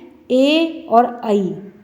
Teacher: कंठ और तालु से जो वर्ण निकलते हैं वो कंठ तालव्य वर्ण हैं